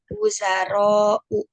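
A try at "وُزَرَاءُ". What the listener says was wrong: Ya, yang panjang roknya ya, bukan zainya. Jadi bacanya wuzaro'u, bukan wuzaro'u, begitu.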